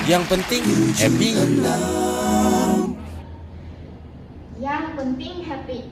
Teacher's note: karena bertemu n dan G maka menjadi n berekor seperti ini kemudian e-nya e terbalik kemudian i-nya I tertutup dan